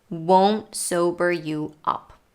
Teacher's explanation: might be puzzling won't won is a reduction of will not it's pronounced with an o diphthong and usually with a stop t at the end